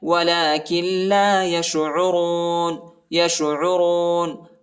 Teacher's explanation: عین کو حلق میں پڑھنا ہے اور را کو موٹا پڑھنا ہے